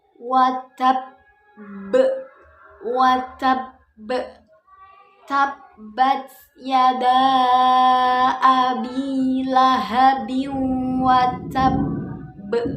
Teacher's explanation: Huruf ba-nya ini, huruf qalqalahnya ini bertasydid, ada tasydidnya. Jadi cara bacanya itu disempurnakan dulu tasydidnya, kemudian dibaca qalqalahnya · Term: qalqalah kubro yang bertasydid